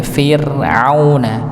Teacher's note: ra sukun sebelumnya kasrah, maka dibaca tipis Fir'auna. Ya, pada Fir'auna ainnya ya dijelas, ya, jangan sampai dibaca seperti hamzah Fir'auna, harusnya Fir'auna ain au.